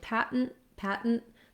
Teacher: there's really no vowel sound so that second syllable is basically just that syllabic n that's surrounded by two stop t sounds